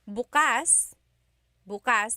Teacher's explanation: the emphasis is on the second syllable, that means open.